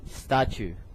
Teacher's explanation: the second T is more like a ch